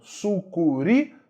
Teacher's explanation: Sucuri, sílaba tônica é a última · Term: oxítona